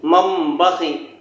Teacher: تنوین یا نون ساکن کے بعد با آئے تو نون کو میم سے بدل کر غنہ اور اخفاء کے ساتھ پڑھیں گے، اس کو اقلاب کہتے ہیں۔